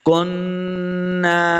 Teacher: نون کے آگے الف ہے، اس کو 2 حرکات لمع بھی کرنا ہے